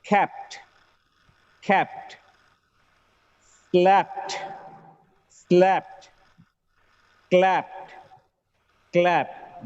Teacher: Wherever a regular action word ends with p sound, when it gets ed, the last sound should be t, not d.